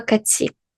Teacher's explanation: тоді цей звук т ми не будемо читати, як нам би здавалось логічно, ті або ді, ми будемо читати як ці. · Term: звук ц